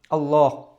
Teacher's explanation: আল্লাহ শব্দের লাম কিন্তু মোটা হয়